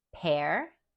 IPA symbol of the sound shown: ɛr